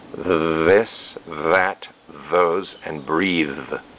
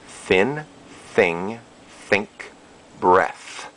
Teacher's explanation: we have either vibration TH or no vibration th